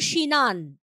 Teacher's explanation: যেমন স্নান থেকে সিনান, সেখানেও যেটা আমরা দেখতে পারি, এই যে দন্তের শয় নয়, এইটাই ভেঙে গেছে, দন্তের স আর দন্তের নয়ের মাঝখানে একটা রস্বই চলে এসেছে, স্বরভক্তি হয়েছে এখানে।